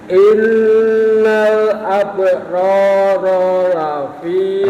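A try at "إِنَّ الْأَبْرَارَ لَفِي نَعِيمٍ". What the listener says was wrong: Ronya yang kedua pendek. Innal ab'ara lafi.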